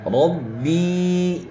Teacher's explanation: را کو موٹا پڑھیں کیونکہ را پر زبر ہے